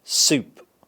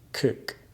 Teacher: Then the short E in the word bitter, when your tongue has a slightly lower tongue position and your lips are slightly spread. The long U in the word soup, is a bit closer than the short O in the word. cook,